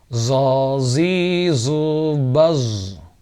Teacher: Zai lebih tipis daripada zo. Zo berat, tebal. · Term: huruf zo